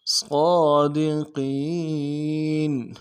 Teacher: قین میں یا مدہ ہے، ایک الف مقدار میں کھینچیں گے